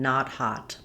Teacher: Let's look at vowel a as in not hot. This is an open back unrounded vowel. We typically spell vowel A with letter O in English, which is where some of the accent error patterns come from. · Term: ah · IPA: /ɑ/